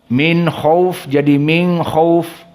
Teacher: ikhfa nun di saat bertemu dengan kha